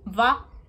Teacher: Ha has the H, ka the K, la the L, ma ha ka la ma M, na the N, pa the P, va is a W, but I've explained before the W's in Hawaiian language don't sound like a W, they sound like a V.